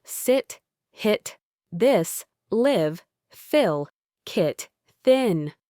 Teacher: Your tongue is relaxed and sits relatively low and flat in your mouth. It's a quick, short, and slightly dull sound. It's a very relaxed sound. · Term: short I sound